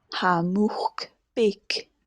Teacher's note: note the sort of pre-devoicing of that final k